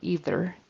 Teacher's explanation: Either, there should be a voiced TH in the middle of either.